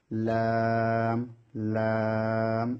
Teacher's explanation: 8 নম্বর মাখারাজ জিহ্বার আগার কিনারা সামনের উপরের দাঁতের মাড়ির সঙ্গে লাগিয়ে লাম লাম। জিহ্বার আগাটা সামনের উপরের দাঁতের মাড়ির সঙ্গে লাগবে